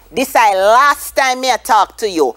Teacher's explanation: So we lose the T.